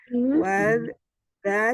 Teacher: Wal dialirkan, sifatnya rohwah